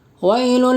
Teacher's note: یا ساکن سے پہلے واو کے اوپر زبر ہے، اس لیے واو لین ہوگا. واو لین کو نرم آواز کے ساتھ جلدی ادا کریں